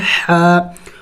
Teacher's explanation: حا حروف حلقے میں سے ہے اور حلق کے درمیانی حصے سے ادا ہوتا ہے